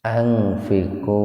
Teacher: Angfiku mantabi wawu ming ihfa hakiki atau ihfa abad. Nun mati ketemu dengan po secara terpisah, jadi betul-betul dibaca samar